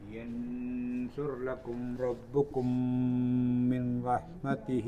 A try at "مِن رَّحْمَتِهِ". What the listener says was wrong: മിൻ റഹ്മത്തി അല്ല, മിർറ. മിർറ